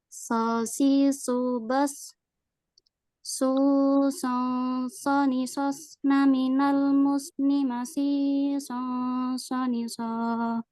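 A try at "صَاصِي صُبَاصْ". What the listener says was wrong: Untuk di huruf shad yang sukun lebih diangkat kembali. Sosi subas bos.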